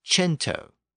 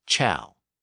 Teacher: c i AO in Italian which is pronounced as Chow so the k sound became a CH sound before the e and i in many Italian words · in Italian before the E and I the k sound shifted to a CH sound